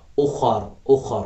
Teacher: ऊ पढ़ेंगे, न कि हम पढ़ेंगे अलिफ पेश ऊ। उख़र, उख़र, ख़ जो है मोटा पढ़ेंगे और रा को भी मोटा पढ़ेंगे जब हम यहाँ पर वक़फ़ करेंगे , उख़र, ठीक, यहाँ पर भी वक्फ़े मुत्तलक़ की अलामत है,